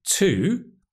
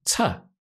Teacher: It can be to, which is the strong form when we stress the word, but it can also be tuh.